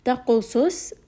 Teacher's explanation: Ta is going to be light. Qaf is heavy, and Sad is heavy.